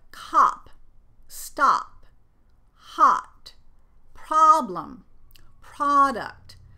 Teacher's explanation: the short O sound in English, which is pronounced ah.